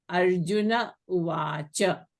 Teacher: So Arjuna is preceded by a and followed by u. So the Visarga of Arjunaha is dropped and you have Arjuna uvacha. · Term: Visarga is deleted